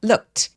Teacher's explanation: look, look. 그래서 이 무성음 뒤에 오는 ed는 완전히 통째로 내 눈에 아무리 e가 보여서 모음으로 발음하고 싶어도 ed를 통째로 t로 발음합니다.